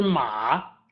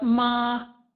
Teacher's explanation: the original character ma is third tone but ma mother is first tone